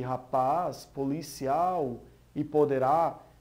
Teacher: Tem sempre a última sílaba mais forte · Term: oxítona